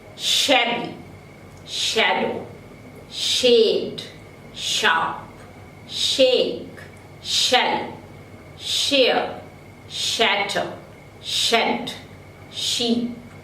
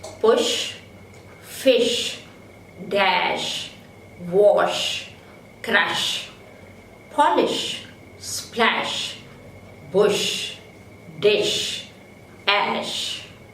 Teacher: The vocal cords are wide apart during the articulation of sh. So it is a voiceless palato-alveolar fricative.